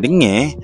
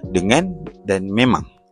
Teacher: pengaruh bunyi sengau nge biasanya merebak kepada bunyi vokal kerana rongga hidung tidak sempat ditutup sepenuhnya semasa menyebut bunyi vokal dalam perkataan tersebut. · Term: nasalisasi